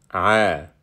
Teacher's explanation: it starts with a voiced pharyngeal fricative